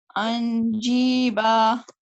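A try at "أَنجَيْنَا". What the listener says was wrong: So you said the noon again. You said make sure that your tongue does not reach the makhraj of the noon. So for saying the noon, your tongue is touching the top palate behind your teeth.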